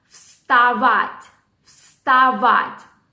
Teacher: The second A, which goes after V, is stressed.